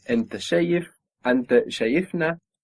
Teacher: So we're adding on a syllable and the accent moves one down.